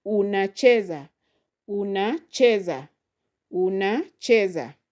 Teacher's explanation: So that is four syllables. So the second from the end is che. So you will stress there on chee.